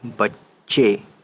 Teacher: چے کے ہی اوپر یہ تشدید ہے، یعنی چے کو ہم 2 بار پڑھیں گے، تو دیکھیے بے اور چے بچ، پھر چے بڑھیے زیر چے، بچے۔